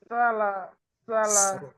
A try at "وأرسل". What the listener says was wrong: সিন সিন তাতে ততটা বাতাস বের হয় না, সিনে বেশি বেশি বাতাস বের হয়।